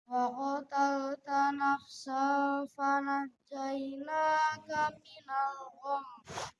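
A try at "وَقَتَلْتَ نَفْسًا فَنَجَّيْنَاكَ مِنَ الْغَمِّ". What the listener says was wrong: Kalau di waqaf minal gham digunakan. Ikhfanya kurang ya. Wa qatalta nafsan ditahan ikhfanya. Minal gham digunakan.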